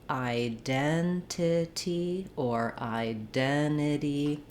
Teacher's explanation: Unless you drop the T, you can use a flap for the second T. The word identity is stressed on the second syllable. Den has the clear red tent vowel, and then the letter I is sort of unusual.